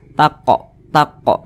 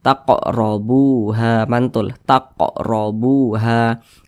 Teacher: Sebutkan itu nantinya saudara sambil dihafal ya begitu Nah maka ini huruf qf sukun dipantulkan cara bacanya taqo taqo mantul seperti itu Dan Dia tergolong kepada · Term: Qalqalah sugro